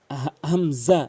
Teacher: হামজা অধিকাংশ লোক হামজা জবর আ বলে, চাপ দিয়ে বলে, এখানে চাপ দিয়ে বলা যাবে না, আ বলতে হবে। এখানে হামজা হলকের শুরু থেকে উচ্চারণ হয় হামজা